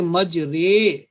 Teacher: یہ جو رے ہے یہ الف کو در حقیقت ہم جھکا کے پڑھ رہے ہیں، یا کی طرف جھکاتے ہوئے الف کو لمبا کر کے پڑھ رہے ہیں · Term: امالہ